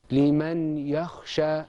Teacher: Well, what happened was the noon sakina in liman and the ya became one stressed letter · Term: idgham